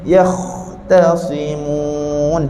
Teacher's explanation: huruf ta kita tak nak terpengaruh dengan ketebalan huruf Kha · Dah lebih kemas masa kita sebut yakhtasimun. Pertama, masa kita sebut angin kha dekat sini dia kena lama, dan angin kha kat sini tak bunyi putus.